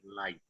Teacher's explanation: if you're just using it as an interjection, like we often do, you still have to pronounce the K